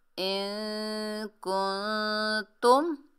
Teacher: इन कुंतुम नून साकिन में इक्फा करेंगे, आवाज़ को नाक में छुपाएंगे।